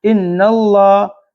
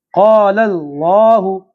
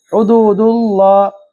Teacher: اللہ لام کو تھوڑا موٹا پڑھیں گے